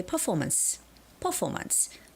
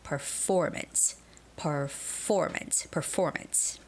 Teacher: But actually, the word has stress on the second syllable